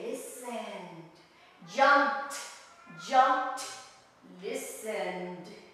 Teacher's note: the E is silent, eliminated, and we join the consonants